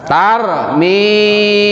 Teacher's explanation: mi yang panjang, mi-nya panjang ya, dibaca panjang karena di sana ada ya sukun setelah harokat kasroh